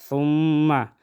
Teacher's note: میم مشدد میں غنہ کریں گے